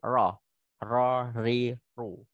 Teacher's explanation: Karena dia adalah makhraj ujung lidah, jadi ya, ujung lidah ketemu langit-langit, bukan makhraj bibir, jadi bibirnya nggak boleh bergerak. Kemudian bacanya takrirnya ada salah satu sifat ro yakni takrir, dia bergetar, nah, bergetarnya halus, tidak boleh kasar ya, tidak boleh ri, ru, nah, tidak boleh sampai gitu.